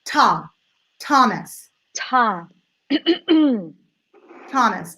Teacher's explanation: options where you can do a short I sound or schwa I'd go schwa so all the energy goes in the first syllable